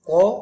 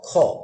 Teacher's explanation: এই যে অতিরিক্ত একটা শ্বাস ওই জায়গায় চলে যাচ্ছে। ক খ, ক অল্প প্রাণ, খ মহাপ্রাণ